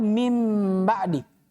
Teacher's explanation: ini dia Kapan nun sukun atau tanwin ketemu dengan ba maka nun sukun atau tanwinnya dirubah bunyinya menjadi apa mim kemudian tidak hanya itu bacaannya disertai dengan dengung ditahan selama dua harakat